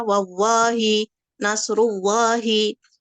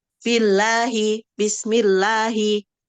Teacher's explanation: lafaz Allah tarkik yaitu yang dibaca tipis